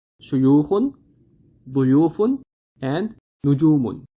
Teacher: The second one has dhamma followed by the letter waw. So we are stretching the second u sound.